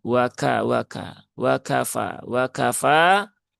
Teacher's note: Kaf dengan ta ini dua-duanya punya sifat hames ya. Maka tunaikan tapi jangan berlebihan.